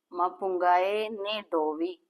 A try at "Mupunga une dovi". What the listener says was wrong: Not mapunga, yeah. Mupunga. Yeah, mupunga. Une Dovi. Not Dovi. Dovi. Dovi. Dovi. Mupunga une Dovi. Yes, mupunga une Dovi.